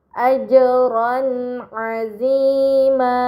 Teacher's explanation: terdapat harakat fatahtain bertemu dengan huruf ain ini dinamakan izhar halqi. Maka fatahtain dibaca secara jelas